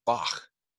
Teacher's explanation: produces a sound reminiscent of the at the end of bach the sound is produced in the back of the throat